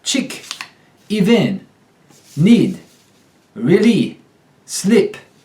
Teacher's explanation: The long E becomes the short I.